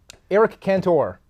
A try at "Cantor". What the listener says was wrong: Eric Cantor. Yes. Yes, you are. And it's not. Cantor. No, you don't stress the O at the end. Eric Cantor.